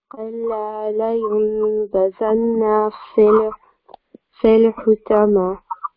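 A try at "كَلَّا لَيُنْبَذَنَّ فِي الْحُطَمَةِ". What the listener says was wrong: Better, yeah, alhamdulillah.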